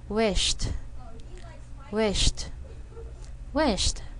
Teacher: And sh sound gets followed by a T sound. · Wish ends in the sh sound, which is unvoiced.